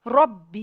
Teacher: را کو موٹا پڑھیں گے، را پہ زبر ہے